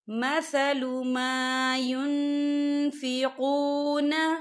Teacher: نون ساکن کی آواز کو ناک میں چھپائیں گے۔ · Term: افا